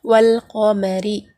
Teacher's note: قاف جو ہے حروف قمری میں سے ہے، تو اس سے پہلے الف لام آ گیا، تو یہاں پر ہم کیا کریں گے؟ صرف لام کو ملا کر پڑھیں گے، الف کو نہیں پڑھیں گے